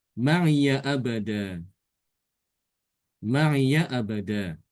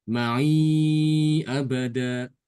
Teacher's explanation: Karena setelahnya ada hamzah, maka dibaca panjang 4 harokat ya.